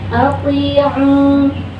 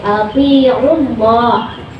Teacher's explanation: Ati'u. Sedangkan jika wasol atau kita meneruskan bacaan, maka gugur madnya, ainnya pendek